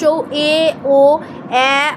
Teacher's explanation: সম্মুখস্থ স্বরধ্বনি, অর্ধ সংবৃত উচ্চ মধ্য